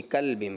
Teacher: कॉफ़ की बजाय पुर करना था, बारीक कर गए